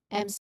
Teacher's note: So the air then here it escapes through your nose, which is why we call it a nasal sound. Since your when you try to pronounce this particular sound, your lips are both firm.